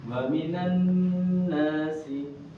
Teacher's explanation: cara bacanya kalau misalkan nun atau mim bertasydid itu ditahan, dia itu seakan dua harokat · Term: gunnah